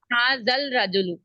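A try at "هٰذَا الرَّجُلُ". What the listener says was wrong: हाजल नहीं होगा, हाजर रजुलु। वो शमसी कमरी का ख्याल रखें ना।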